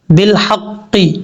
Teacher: اب اس کے بعد ہے بالحق، با لام زیر بل، حا قاف زبر حق، قاف زیر قی، بالحق. حا جو ہے یہ باریک ہے، اس کو بھاری ساؤنڈ کے ساتھ پڑھنے کی ضرورت نہیں ہے. قاف زیر قی بالحق.